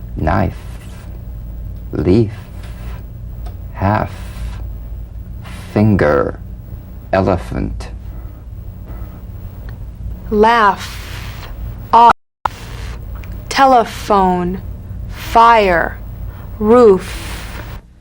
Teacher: one isn't it the f is a cognate to the v the unvoiced fricative labiodental upper teeth to lower lip just like the v now feel the v then turn off the voice and continue